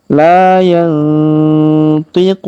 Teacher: La, huruf la kita panjangkan 2 harokat karena alif di depannya. La yang, huruf nun sukun bertemu ti maka kita dengungkan dan kita samarkan